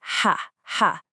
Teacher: No vibration in your throat. Just a nice strong breathy sound from the back.